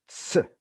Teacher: There's a t stop like portion and a sibilant release portion. So in that sense, it has both T-like properties, the stoppage at the onset, and S-like properties, the sibilant release. · It has a stop like onset starting point and a sibilant release. Ts. There's a t stop like portion and a sibilant release portion. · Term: affricate